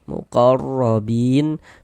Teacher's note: Huruf ra memiliki harakat fathah dibaca tawhim juga. Muqarrobin bin dibaca panjang. Ini namanya mad thobi'i. Namun mad thinya itu berubah menjadi mad ari tukun.